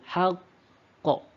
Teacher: Di huruf q-nya ini kan huruf qalqalah dan dia ada tasydid, maka kita akan kuatkan lagi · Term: qalqalah kubro